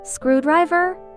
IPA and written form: ˈskruːˌdraɪvər (Screwdriver)